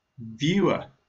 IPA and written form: ˈvjuː.ər (Viewer)